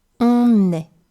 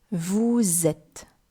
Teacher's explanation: we use the last consonant, which is normally silent, to create a link between what would otherwise be two vowel sounds together, which are always hard to pronounce. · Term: liaisons